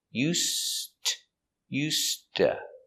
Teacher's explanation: the D used is silent because it's before a T. · S. The S is pronounced with no voice because it is before the voiceless consonant T. So together, no voice.